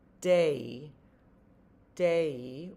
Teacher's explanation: we're saying two vowel sounds of one that elides into another. We're saying day day. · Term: long a